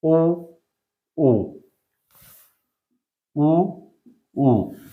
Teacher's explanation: जिन स्वरों का उच्चारण करते समय होठों की आकृति कह सकते हैं, बनावट कह सकते हैं। होठों की आकृति गोल हो जाती है या गोलाकार बन जाती है, उन्हें वृत्ताकार स्वर कहा जाता है